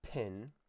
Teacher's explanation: So think of the English word pin and the English word spin. If you put your hand in front of your mouth and you say pin, you're going to feel a burst of air at the very beginning of the word. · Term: aspiration